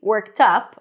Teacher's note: stress is on the second part of the phrase - worked UP, on the word 'up'